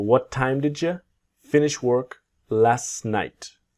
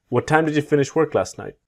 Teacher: with last you will see the silent T